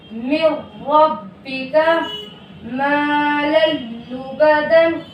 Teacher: اگر ان 2 حرفوں میں سے کوئی حرف نون ساکن یا تنوین کے بعد آ جائے تو تنوین والا حرف یا نون ساکن ادغام بلا غنہ کے حرف سے مل کر جلد پڑھا جائے گا، نہ کھینچے گا، نہ غنہ ہوگا، جیسے من ربک مالا لبدا۔